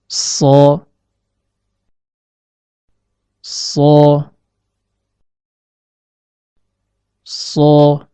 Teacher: Perhatikan gambar animasi berikut. Huruf shad keluar dari pertemuan antara ujung lidah dengan bagian dalam gigi seri bawah.